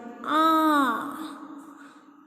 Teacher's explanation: Ah is unrounded. It is in the back. It is in the back and it is open. So we will write ah as unrounded, back, open.